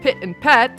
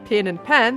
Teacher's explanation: pit and pat sound different, but pin and pan sound the same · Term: pin-pan merger